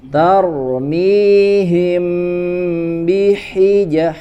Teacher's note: menutup sempurna bagian bibirnya bibir atas dan bawah ya kemudian baru bnya dibaca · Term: itbaq